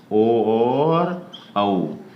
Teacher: ओ और औ, ये दोनों जो वर्ण हैं वो हमारे कंठोष्ठ बोले जाएंगे या उच्चारित होंगे।